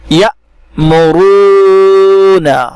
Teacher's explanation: جس حمزہ پر سکون ہے یعنی جزم ہے تو اس کو پڑھتے وقت جھٹکا کے ساتھ ادا کریں گے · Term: حمزہ ساکنہ